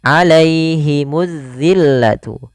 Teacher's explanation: jangan dibaca terdengar huruf e, tapi i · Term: bacaan lin